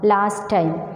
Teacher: It's pronounced as last time in connected speech, that is the omission of t sound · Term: elision